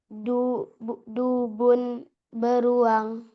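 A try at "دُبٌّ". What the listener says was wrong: Dubun ada tasdidnya. Coba diulang.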